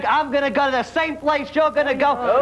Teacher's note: it's a distinctive nasality that's a mix of Richard Simmons a splash of Joan Rivers and a heavy dose of pure Bronx